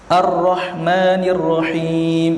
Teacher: semasa hurufnya disebut, keadaan hujung lidah bergerak berulang-ulang serta bergetar. Hurufnya satu sahaja, yaitu ra. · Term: takrir